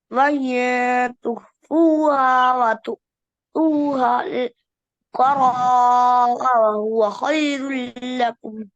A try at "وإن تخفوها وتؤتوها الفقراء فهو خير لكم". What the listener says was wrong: فهو فاعل شروع में फा है فهو. وإن تخفوها وتؤتوها الفقراء فهو خير لكم. فهو خير لكم.